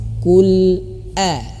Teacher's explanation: huruf hamzah ini dia memiliki sifat Jah jelas ya terputus suaranya